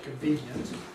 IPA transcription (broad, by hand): kənˡviːnjənt